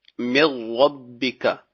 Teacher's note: اب مثال کے طور پر من ربک، نون ساکن کے بعد را آ گیا تو یہاں پہ اب غنہ نہیں ہوگا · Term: ادغام